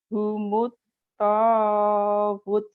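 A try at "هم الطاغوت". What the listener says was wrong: jadi panjang bu. Homot tagut.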